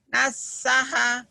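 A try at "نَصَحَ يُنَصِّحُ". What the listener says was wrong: Naso. Bukan nasaha. Huruf Jawa, huruf O. Nasaha yunassihu.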